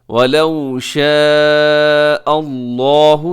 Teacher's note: لفظ اللہ موٹا رکھیے گا